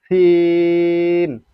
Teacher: সিনটা উচ্চারণ করতে তিন আলিফ পরিমাণ টানতে হবে